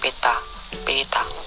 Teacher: Konsonan T, bunyi apikoalveolar hambat tak bersuara